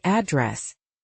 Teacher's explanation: It's usually address stressed on the second syllable. >> And in British English, >> often adress stressed on the first syllable.